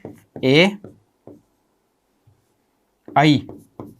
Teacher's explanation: इनका उच्चारण स्थान कंठ और तालु के माध्यम से किया जाता है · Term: कंठ तालु